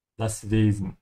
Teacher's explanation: in northern Germany, you would hear more of a Z